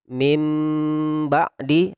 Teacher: Jadi didengungkan sedikit, disamarkan huruf ba sehingga menjadi mim ba'di. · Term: iqlab